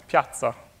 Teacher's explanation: you can think about it as a double T followed by an S